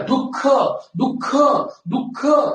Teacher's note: इथं गुरु लिह दुःख. कारण या दचा उकार जरी पहिला असला तर समोर आलेल्या विसर्गामुळं त्याचा उच्चार लांबट होतो